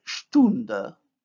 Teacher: The vowel U is plus back plus round.